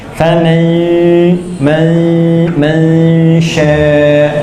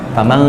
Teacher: Sama kayak sh itu kayak ja, kayak ya, cuma sifatnya beda sedikit. Jadi begitu en langsung pindah ke makhrajnya sya.